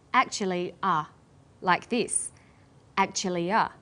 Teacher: This is linking type 1, vowel plus y plus vowel. Actually ends in an e vowel sound, and the next word begins with a schwa sound.